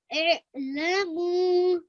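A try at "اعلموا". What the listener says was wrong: We just have to work on that ayn.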